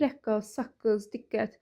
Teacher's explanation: K-q kimi tələffüz olunmasına, məsələn, rəqqas. Tələffüz zamanı qoşa q-nın birincisi k-yə çevrilir.